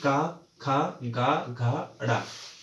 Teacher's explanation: कंठ यानी कि गले से बोले जाने वाले शब्द जो डायरेक्ट गले के द्वारा निकलते हैं, जैसे कि का, खा, गा, घा, ड़ा।